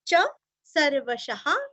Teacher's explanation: विसर्ग का उच्चारण आप ह अथवा हा कुछ भी कर सकते हैं